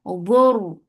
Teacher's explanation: ra will be heavy because there is dhamma before it.